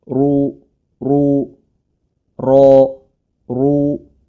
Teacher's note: huruf ro harakat dhamah ya ini tebal